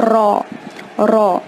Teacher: اس کو منہ بھر کے پڑھیں، زبان کے آگے والے حصے سے ادا کریں، بیچ والے سے نہیں